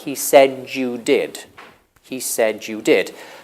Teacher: When you have a D on the end of a word and the next sound is y, you can assimilate the two sounds. You can get j.